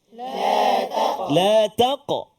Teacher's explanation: Huruf qaf adalah salah satu daripada huruf qalqalah. Dan dia adalah sukun yang asal. Terletak di tengah kalimah. Maka lantunan dia yang paling rendah. Ataupun sughra kan.